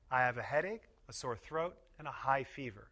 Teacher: We put stress on each item in the list and pause a little between each item.